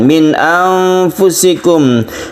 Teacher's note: ada nun mati bertemu dengan hamzah, ini disebut dengan izhar halqi, tidak berdengung.